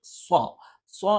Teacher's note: സ്വ ഉച്ചരിക്കുന്ന സമയത്ത് നാവിന്റെ മധ്യഭാഗം മേലെ അണ്ണാക്കിൽ സ്പർശിക്കുന്നില്ല പക്ഷേ അതിന്റെ തൊട്ട് താഴ്ഭാഗത്തായിട്ട് നിൽക്കുകയും ചെയ്യും ഓറ നാവിൻറെ തലയുടെ മുതുക് മേലെ